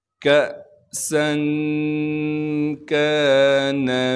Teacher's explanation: حمزہ ساکن ہے لہٰذا ہلکا سا جھٹکا کے ساتھ پڑھیں گے، سین کی سیٹی کو صاف کر کے ادا کریں گے اور سین میں اخفا یعنی غنہ کیا جائے گا